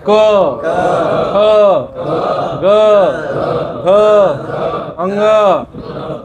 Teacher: जे मागची जीभ आहे ते अंदर गळ्यात लागली